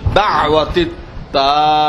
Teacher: দাওয়াতি তাম্মা, হ্যাঁ, তাকে টান দিতে হবে। এরপর মিমে তাসদিদ আছে, ওখানে গুন্না করতে হবে